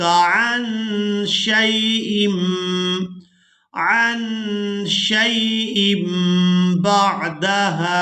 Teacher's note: क़ाल इन सअलतुक अन शैइम बअदहा, यहाँ पर हमने छोटी मीम को अदा करना है। तनवीन में जो नून की आवाज़ है इसको हमने मीम के साथ बदल कर अदा करना है। इसकी वजह यह है कि तनवीन के फ़ौरन बाद बा आ गई है। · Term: इक़लाब